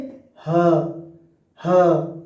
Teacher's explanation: ग्लो टल यानी कि स्वर रज्जु यानी कि वोकल कॉर्ड स्वर रज्जु जिसको हम बोलते हैं वोकल कॉर्ड को एक साथ रखकर ध्वनि बनता है